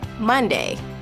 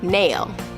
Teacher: air can only escape through the nose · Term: nasals